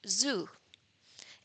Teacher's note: In this case, there is vibration of the vocal cords and this is why it's called voiced alveolar fricative